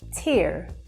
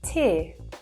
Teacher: in American English, you'd hear tear, so you hear that R sound, but in British English, we would say tear, so it's very soft